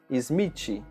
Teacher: para nós é muito difícil fazer o som de TH. Então, nós fazemos a pronúncia de TI em português.